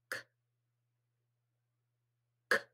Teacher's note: No, so it's unvoiced. So it's blocked and it's unvoiced.